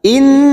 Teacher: nun yang bertasdid gunnah musaddadah kita tekan selama 3 harokat. Jangan lupa kita dengungkan.